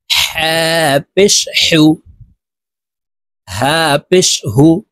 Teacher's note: হা হরফ হলকের মধ্যখান থেকে উচ্চারণ করতে হবে কারণ হার মাখরাজ হলকের মধ্যখান থেকে হবে হা পেশ হু হা